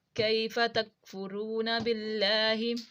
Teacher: باللہ یہاں پہ لام ہمارا ترقیق پڑھیں گے یعنی کہ باریک کر کے پڑھیں گے